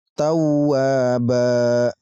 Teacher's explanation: Nah, ini masuk kategori mad iwad. Ya, kita panjangkan ba-nya ini karena sebagai pengganti dari tanwin yang kita hilangkan